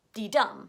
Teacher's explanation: The first syllable is unstressed and the second syllable is stressed. So it sounds like this.